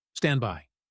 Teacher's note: The D is gone.